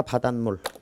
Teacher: 바다 플러스 물인데 시옷이 들어갔어. 사이시옷 뒤에 물, 미음이 결합되는 경우에는 니은으로 발음한다